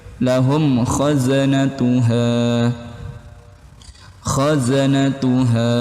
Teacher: Sa'alahum kha, mim sukun bertemu huruf kha, itu hukumnya idhar syafawi, jelas di bibir.